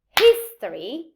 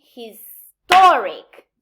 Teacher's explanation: For example, I say history, the stress is in his, but I say historic. So by adding ik, the stress pattern of the root changes, and the main stress moves to the syllable preceding the suffix.